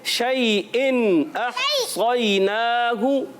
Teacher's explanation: हमजा को खूब वाज़े करेंगे, झटके से अदा करना है। · इसको कहते हैं इजहार हल्की, यानी इजहार से मुराद होता है नून को जाहिर करके पढ़ते हैं, गुन्ना नहीं करते